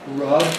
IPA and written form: rʌb (rub)